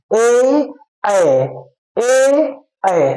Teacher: कंठ और ताल दोनों पर प्रेशर पड़ रहा है उसके बाद यह वर्ण निकल रहा है इसलिए इसको हम कंठ और ताल कहते हैं अर्थात कंठ तालव्य